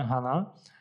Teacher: o acento ele apresenta uma queda no final